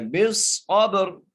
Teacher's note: با کو صاد سے ملانا ہے اور صاد کو موٹا کر کے پڑھنا ہے، صاد کو آگے با سے ملانا ہے اور با پر قلقلہ کرنا ہے ، بالصبر، ٹھیک ہے، اور را کے نیچے زیر ہے، بالصبری،